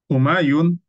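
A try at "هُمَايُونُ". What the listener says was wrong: Jangan diwakafkan ya, baca ya. Humayunu. Pokoknya jangan diwakafkan dulu, harus sempurna.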